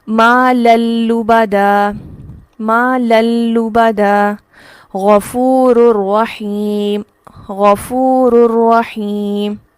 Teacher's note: ٹھیک ہے، تو اس کے پڑھنے میں کہیں بھی کوئی نون کی ساؤنڈ نہیں ہے، اور را یہاں پر ڈائریکٹ نیکسٹ را سے مل رہا ہے، لام یہاں پر ڈائریکٹ نیکسٹ لام سے مل رہا ہے. غنہ کی ادائیگی کے بنا ان الفاظ کو ادا کیا جائے گا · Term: ادغام بلا غنہ